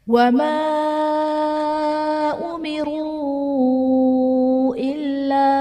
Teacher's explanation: وما امروا الا، وما میں الف سے پہلے زبر ہے، الف مدہ کا قاعدہ اور حرف مدہ کے بعد حمزہ دوسرے کلمے میں ہے تو یہاں پر مد منفصل کا قاعدہ ہوگا